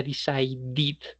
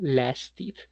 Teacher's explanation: lo que vamos a hacer es agregar un sonido diferente. El sonido va a ser id.